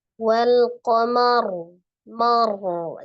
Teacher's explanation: Jadi menebalkan huruf ro itu dengan tidak menggerakkan bibirnya, karena bukan huruf syafatain tapi huruf al-lisan. Ya, jadi dengan cara menekan makhraj ro-nya itu qamar.